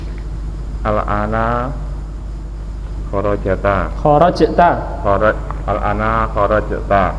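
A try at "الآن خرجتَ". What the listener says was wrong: Nah, jimnya disukun ya.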